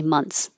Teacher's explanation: THS is difficult months and has a lot of movement so you can make it more simple and skip the th